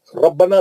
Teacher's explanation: इलल कहफी फ़क़ालू रब्बना, है ना, फ़क़ालू 2 मद्दे इसलिए, रब्बना रब मोटा पढ़ेंगे, बा को सख्ती से पढ़ेंगे